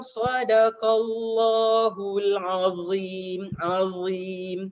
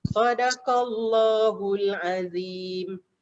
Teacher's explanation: Kalau kita tak tebalkan za, kita akan tertukar dengan zal. Zal. Azim tebal.